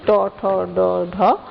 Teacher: অর্থাৎ ট বর্গের যে বর্ণগুলো রয়েছে ট ঠ ড ঢ মূর্ধন্য এই বর্ণগুলো উচ্চারণের স্থান হচ্ছে মূর্ধা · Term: মূর্ধন্য বর্ণ